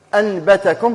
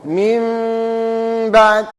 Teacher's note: أن تنطق بميم ساكنة بلطف، أي ما تزيرش عليها، من غير ضغط للشفتين، مع غنة من الأنف، وتنفتح شفتيك آخرا بالباء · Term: الإقلاب